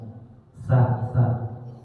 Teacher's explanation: Itu yang sa yang dari ujung lidah ke ujung gigi seri atas. Sa, bukan sin, bukan shin juga, tapi sa. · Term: sa kecil